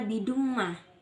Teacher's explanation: Cara membacanya yaitu masuk dengan mendengungkan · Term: idgham bihunna